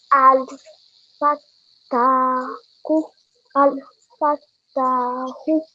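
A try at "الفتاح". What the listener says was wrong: Very nicely read.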